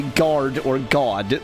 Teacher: we really say the R hard, but even the most rhotic English accents don't put as much sort of weight on the R as an American accent does